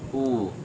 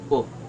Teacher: short quote it is also a more relaxed than the uh our lips are still rounded but it's not a tight Circle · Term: the short